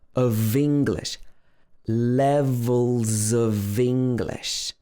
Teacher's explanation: of okay and the next word is a vowel sound so of becomes of the v sound and english actually starts with an e sounds